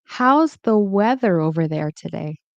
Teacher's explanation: So the stress is on weather